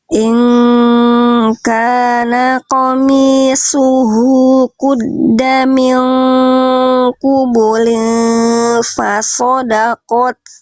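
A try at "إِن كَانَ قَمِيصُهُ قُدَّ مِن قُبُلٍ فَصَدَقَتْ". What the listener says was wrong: Iya, bagus.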